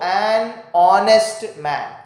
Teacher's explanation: the h is silent and the starting sound is a vowel sound